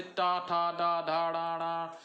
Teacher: मूर्धन्य कठोर तालु के अगले भाग से